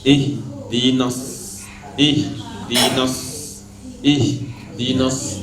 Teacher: Ujung lidah sama seperti sin. Cuma bedanya dengan sin punggungnya enggak naik. Kalau shad punggungnya naik. Kalau ta lebih naik. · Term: huruf shad